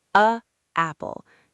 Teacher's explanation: Do you feel how your breath has to stop completely between the two words? It's like your throat closes for a millisecond.